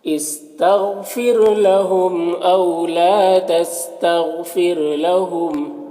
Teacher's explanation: لام میں الف مدہ ہے، ایک الف کے برابر کھینچیں گے۔ غین حروف مستعلیہ میں سے پر پڑھیں گے، یہاں پر را کو باریک پڑھیں گے اس طرح سے۔ استغفر لهم او لا تستغفر لهم، نون میں اخفا ہوگا، نون کی آواز کو ناک میں چھپا کر پڑھیں گے۔